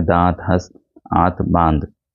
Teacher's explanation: वायु नाक और मुख दोनों से निकलती है। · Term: चंद्रबिंदु